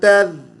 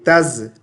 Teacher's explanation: ذال کو زا نہیں پڑھیں گے، تز، ٹھیک ہے؟